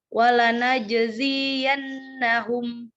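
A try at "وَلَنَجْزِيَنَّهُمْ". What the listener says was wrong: Z-nya kepanjangan diulang.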